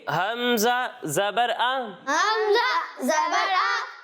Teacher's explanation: हलक के निचले हिस्से से पढ़ेंगे। कहाँ से पढ़ेंगे?